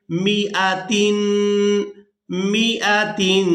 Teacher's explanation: मीम को बगैर खींचे अदा करेंगे